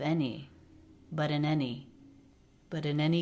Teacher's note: the N consonant linked into the beginning vowel a of any